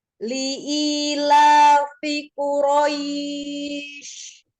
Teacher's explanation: Jangan langsung hilang, tampakkan tafasyi di huruf shin.